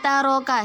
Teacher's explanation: dibaca dengan samar-samar. Samar-samar itu tidak berdengung dan tidak juga jelas. Taroka samar-samar dan ditahan dua harokat. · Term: ikhfa